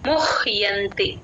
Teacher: తేన తేన ముహ్యంతి ఆ హ కింద య వత్తు ఎప్పుడు వచ్చినా సరే ముహ్ ఆ ము కి హ ని జాయిన్ చేసుకుంటే య వత్తు క్లియర్ గా వినిపిస్తుంది